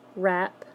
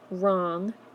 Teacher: We're also looking at WR, where the first sound you hear is the R sound instead of the W sound